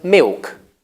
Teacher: this L is becoming a vowel today. It's becoming a vowel sort of like O or U